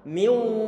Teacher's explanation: Jangan sampai lupa di saat kita membaca nun sukun bertemu dengan wawu, nanti bibir kita perlu untuk dimonyongkan karena ada wawu sukun, seakan-akan di sana ada suara dhammahnya. · Suara nunnya enggak ada, cuman dengungannya masih ada. Makhraj huruf nun di bagian lisan, bagian lidah enggak ada terdengar. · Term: idgham bi gunnah